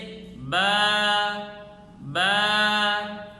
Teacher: با کے ہونٹوں کے تلی والے حصے کو آپس میں ملا کر سختی کے ساتھ ادا کرنا، ایک الف سے زائد نہ کھینچنا، آخر میں حمزہ اور ہا کی آواز نہ نکالنا جیسے با با، یہ اس کی صحیح ادا ہے۔